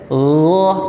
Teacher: Jadi ketika melafalkan huruf gha ya, gha di sini bukan pakai g biasa ya, teman-temanku sekalian. Jadi agak sedikit halus ya. Gha sedikit diseret.